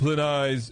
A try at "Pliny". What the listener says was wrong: You guys are both wrong. The Y is silent. It's Plin.